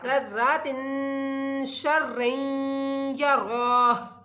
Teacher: यहाँ पर तनवीन है उसके बाद शीन आ रहा है तो यहाँ पर गुन्ना किया जाएगा